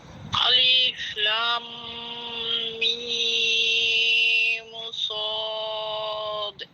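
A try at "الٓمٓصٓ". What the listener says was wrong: এখানে লাম হরফে আরেকটু টান হবে, আরও টান হবে, আপনার টানটা অনেক কম হয়ে গেছে।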